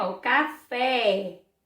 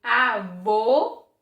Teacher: percebe-se que a boca da gente faz tipo um biquinho, avô, porque o som fica fechado, certo?